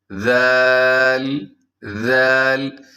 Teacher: ذال کو نرمی سے، اور اس میں سیٹی بھی نہیں ہے